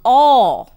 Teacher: It is also a rounded vowel present between the half closed and half open positions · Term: long vowel aw